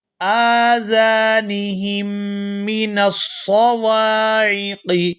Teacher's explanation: ہا کو میم مشدد کے ساتھ ملائیں گے تو غنہ کریں گے